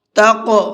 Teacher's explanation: تق قاف کے اندر بھی قلقلہ کریں گے، یعنی ہلکا سا آواز کو ڈبل کریں گے، اس لیے کہ قاف بھی حروف قلقلہ میں سے ہے اور اس کے اوپر جزم بھی ہے۔